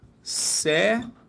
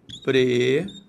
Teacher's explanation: Repare que todas elas têm como a sílaba tônica a penúltima. Isso as transformam em, repare, paroxítonas.